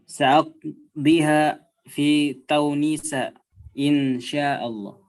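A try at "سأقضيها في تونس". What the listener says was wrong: Fi Tunis, ya, bi dhammit ta.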